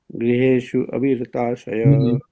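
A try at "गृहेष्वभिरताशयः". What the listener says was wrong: No, not Griheshu. It's a V. You take the V and detach it from Grihesh and attach it to Abhiratashaya.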